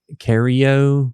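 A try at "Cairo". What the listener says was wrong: No, it's before the R.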